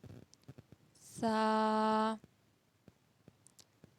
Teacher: زبان کی نوک جب اوپر کے اگلے 2 دانتوں کی نوک والے حصے سے ملے تو ادا ہوتا ہے سا